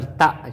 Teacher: تا حمزہ زبر تا، جھٹکا دے کر پڑھیں گے، حمزہ کے اوپر جزم ہے۔